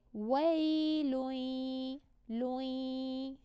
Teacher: It's a nasally yeah sound. So the nasalization of the n hasn't completely dissolved, but overall we're merging the n into the yeah, but there's a slight remnant of that nasalization still there.